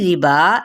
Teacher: یا کلون ربا، ٹھیک ہے، مد اصلی بالالف ہے تو اس لیے ربا اس کو ایک الف یا دو حرکات کے برابر کھینچیں گے